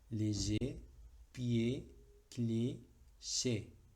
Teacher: Finales en ER, ED, EF y EZ se pronuncian con una E cerrada.